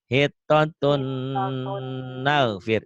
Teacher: Dibacanya N-nya hilang. Tapi hilangnya nggak kelihatan ya, karena masuk N lagi. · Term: idgham